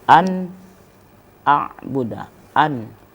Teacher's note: ketika nun mati bertemu dengan alif maka bacaan izhar itu harus dinyatakan An a'buda An jadi bunyi nunnya itu jelas Anel an a'buda